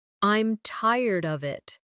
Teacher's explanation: I'm tired of it, with of sounding almost like uhv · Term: weak forms